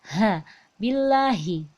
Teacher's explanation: maka terakhirnya itu besar dari pangkal tenggorokan